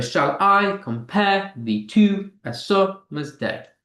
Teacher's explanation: It's actually an I am. You get the unstressed followed by stress.